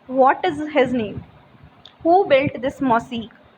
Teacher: But a question, wh question, is spoken with the falling intonation. When you are speaking any question which is starting with the wh word, like with what, when, where, whose, whom, like these words, then there is a falling intonation, like what is his name, who built this mosque.